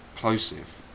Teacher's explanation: Airy sound which doesn't actually reduce a resonated sound for example the letter P when pronounced doesn't produce a noise it only produces air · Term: voiceless plosive